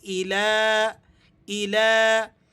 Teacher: الہ، لام پر جو کھڑا زبر ہے اسے آپ نے 1-2 حرف کے برابر کھینچ کر ادا کرنا ہے